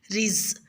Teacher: رزقہ میں را کے نیچے زیر ہے تو را کو باریک ادا کریں